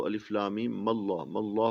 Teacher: मीम को इसमें जलालत के साथ मिलाएंगे तो अलिफ लाम मीम मल्लाह मल्लाह पढ़ेंगे